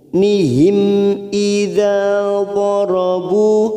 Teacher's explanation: mim sukun bertemu hamzah, namanya bacaan idhar safawi. Kita baca jelas tanpa mendengung.